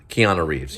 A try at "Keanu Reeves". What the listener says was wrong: No, Keanu Reeves. You're doing the K too strong. Keanu Reeves.